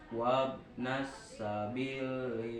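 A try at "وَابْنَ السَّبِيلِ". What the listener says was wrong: B-nya panjangin kan. Wabnas sabili kurang panjang.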